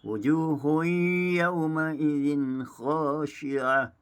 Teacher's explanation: Bagi bacaan riwayat khalat, sama seperti bacaan hafal asim dibaca secara tahqiq dengan bacaan idgham ma'al ghunnah didengungkan. Manakala bagi bacaan riwayat khalaf, ia dibaca tanpa didengungkan, idgham bila ghunnah.